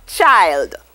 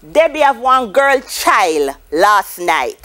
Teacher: So we notice that the D at the end drops off. It's devoiced. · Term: devoiced consonant clusters